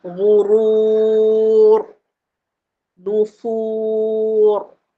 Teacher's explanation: Ra belakang tu dia tebal. dia habis sampai 21 aje. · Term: Rak tebal, ra' tebal